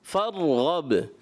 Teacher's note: با میں کلکلہ، را میں کلکلہ نہیں۔